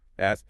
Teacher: But in RP, bath uses the same vowel as father.